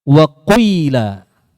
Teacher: Ifrozan. Yaitu mencampur bacaan ya, bacaan huruf ya dengan huruf waw. Namun kadar huruf wawnya lebih sedikit daripada huruf ya-nya. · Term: ya ishmam